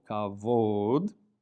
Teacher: The bet is pronounced like a V because it lacks the dagesh. And the kaf at the beginning of the word has a hard K sound, kavod, honor or glory.